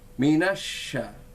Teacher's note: Huruf shin adalah huruf tafashi. Lidah kita melebar ya, dalam itu ya, tengahnya itu tepi-tepinya melebar, maka bunyinya menjadi minasya ya.